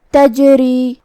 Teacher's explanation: کلمت تجری میں جیم پہ جزم ہے، یہاں جیم کا حکم ہے قلقلہ، مطلب ہم جیم کو ہلاتے ہوئے یہ کلمہ کو ادا کریں گے